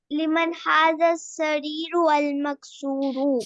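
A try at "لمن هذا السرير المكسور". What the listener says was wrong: سریرو نہیں نا، سریرل، پھر را کو آپ لام کے ساتھ ملا دیں گے.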